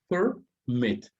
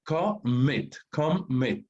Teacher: ¿Dónde está la mayor fuerza de voz? Al final.